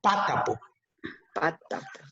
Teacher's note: These words are 3-syllable words. However, this word is stressed in the first syllable, patapo. Patapo.